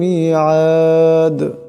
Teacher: লা ইউখলিফুল মিআদ এখানে দাল সাকিন হবে, দাল সাকিন হলে কলকলা হয়ে যাবে